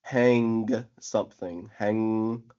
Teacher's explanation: The obstruction is in the mouth itself because the tongue and the soft pallet are closed down to create the sound. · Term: ng sound, the NG sound